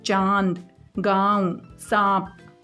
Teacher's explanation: दोनों से आवाज निकलती है जैसे कि चांद गांव सांप जवाब इनको बोलते हैं तो उच्चारण नाक और मुंह दोनों से किया जाता है · अनुनासिक यानी कि नाक और मुंह दोनों से आवाज़ निकलती है।